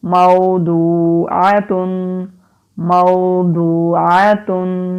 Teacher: واو سے پہلے زبر ہے، حروف لین ہے، نرمی سے پڑھیں گے، کھینچیں گے نہیں